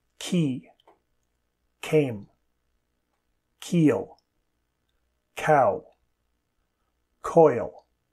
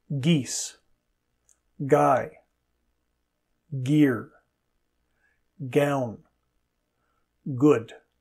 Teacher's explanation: /k/ and /g/ are a matched pair. /k/ is voiceless and /g/ is voiced. · K is voiceless and g is voiced. The tongue is raised at the back of the mouth.